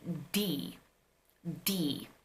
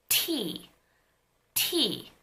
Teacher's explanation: you put a finger over here and you articulate D D you're going to feel that the vocal chords are vibrating from the beginning but when you say Tee tee there is no vibration when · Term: voicing